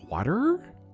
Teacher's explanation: Everything just goes up because for some reason everything's got like that interrogative tone to it. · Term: up inflection